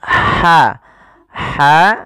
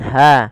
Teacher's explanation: huruf ha yang kecil itu dikeluarkan dari tenggorokan tengah tengah tenggorokan